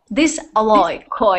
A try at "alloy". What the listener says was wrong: Alloy. You're doing the kind of ahead, away, alloy, but it's not allure. There is a word allure to tease somebody and maybe attract them, to allure them, but this is alloy. So the stress is on the first part, alloy.